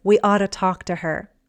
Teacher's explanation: Notice the pronunciation with ought to often becomes otta.